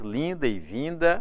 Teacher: o N de linda e também o N de vinda é o N que nasaliza a vogal anterior. Nesse caso, você não conta como consoante, mas conta como som nasal.